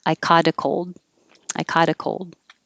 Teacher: the t changes to a d